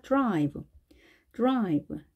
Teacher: d 소리가 좀 약하게, 약하게 발음을 하시면 되겠습니다. 빠르게 하고 그다음 r로 이어지면 되겠습니다.